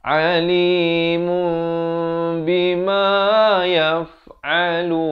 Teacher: Di sini hukum iqlab, kena ditukarkan daripada bunyi nun kepada bunyi mim, daripada alimun jadi alimum. Tapi jangan lupa panjangkan 2 harakat.